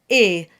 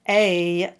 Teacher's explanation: It's a single sound, A, not a double sound, A, as in may.